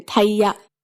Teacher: It has a bit less of a puff of air than in English.